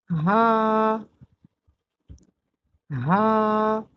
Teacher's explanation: یہ والا ہاء حلق کے درمیان سے ادا ہوتا ہے اور ہاء حلق کے نچلے حصے سے ادا ہوتا ہے۔ ہاء اور ہاء کی آوازیں آپس میں ملتی جلتی ہیں لیکن ان کی ادائیگی اور مخرج میں بہت فرق ہے۔